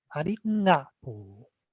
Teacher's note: the ga has the nasal sound